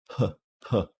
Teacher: you might get some vibration at the end when the vowel comes out but just the P itself is not vibrating